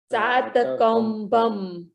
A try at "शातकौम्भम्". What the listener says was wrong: हाँ ये शात और सात में अंतर देखिए। समय वाला सात नहीं है, शक्कर वाला शात है, किंतु शायद गुजराती प्रोनाउंसिएशन में दोनों एक जैसे ही हो जाते हैं, नहीं होते? शातकौम्भम बोलिए।